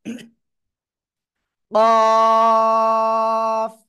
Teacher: উচ্চারণ হবে জিহ্বার গোড়া, তারপর আবার উপরে তালুর সাথে লাগিয়ে মোটা আওয়াজে চার আলিফ টানে উচ্চারণ করব।